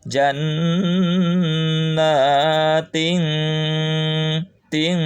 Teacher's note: suara masuk ke pangkal hidung pakai dengungan · Karena kalau pol ke ang nanti apabila tanwin atau nun sukun menghadapi kaf dan kop ya, ikhfa abad. Tapi ini harus agak-agak ke n tapi agak-agak ke eng seperti itu kan, samar-samar tapi pakai dengungan